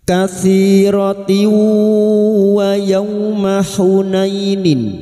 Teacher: masuk dengan mendengung masuk pada huruf wau dan mendengung selama tiga harakat · Katsiratiwah, tak marbuta yang berharokat kasrah tanwin bertemu wawu, idgham bi gunna, nun sukun atau tanwin yang bertemu dengan salah satu dari huruf 4 ini termasuk huruf wawu, masuk dengan mendengung, masuk pada huruf wawu dan mendengung selama 3 harokat